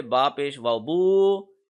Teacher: بو کو 1 سیکنڈ لمبا کھینچ کے پڑھیں گے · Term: واو مدہ